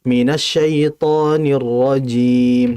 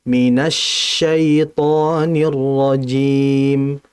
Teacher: syin ini apalagi dia bertasydid tafasyinnya itu harus ditahan dengan kuat dengan aliran yang ada